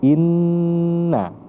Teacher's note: dan huruf nun maka ketika Nun bertasdid ee itu seperti Inna ditekan selama dua harakat atau setara dengan satu Alif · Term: wajibul gunnah